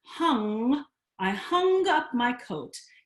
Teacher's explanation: the NG causes the tongue, the back of the tongue, to go up to the soft palate